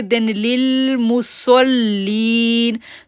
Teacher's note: اب لل جب لام کو لام کے ساتھ جوڑیں گے تو لام کے اوپر تشدید ہے، وہاں پر تشدید کا شدت ظاہر کریں گے